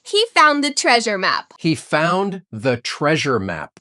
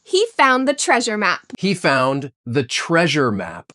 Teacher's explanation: Make your voice go up on the word treasure.